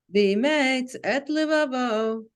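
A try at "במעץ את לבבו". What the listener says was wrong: Well, now you went back to emates like a kind of Munach hybrid.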